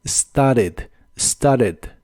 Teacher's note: started y la e del final es muy muy suave started en inglés americano es muy común que no se pronuncie la t de esta palabra · En inglés americano es muy común que no se pronuncie la T de esta palabra, así que aunque ambas formas son correctas, casi siempre la vas a escuchar como started, started.